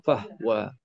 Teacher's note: kalimah huwa didahului huruf fa, matikan ha